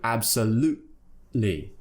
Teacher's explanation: You have to create a sound in your throat which replaces the T, kind of mock sound we call the glottal T.